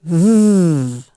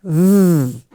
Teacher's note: my teeth kind of hook over my bottom lip, and I say, v, okay? And it's rumbled down in my throat